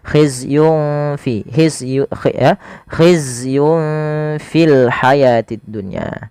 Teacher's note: maka samarkan langsung nunnya kepada huruf fa-nya. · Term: ikhfa